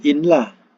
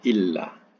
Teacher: Jadi tulisannya jadi illah. Kalau ditulis alif nun lam alif pun kita tak akan bunyikan inlah. Kita akan bunyikan illah. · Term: idgham